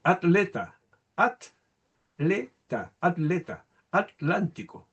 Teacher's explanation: en España se puede pronunciar no de manera tautosilábica, o sea, en la misma sílaba, sino que heterosilábica, en sílabas separadas.